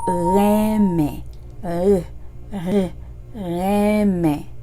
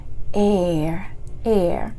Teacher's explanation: It's open mouth. It's not rounded mouth. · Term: Haitian R